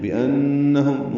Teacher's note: نون مشدد پہ غنہ ہے، میم ساکن پہ اظہار شفوی ہے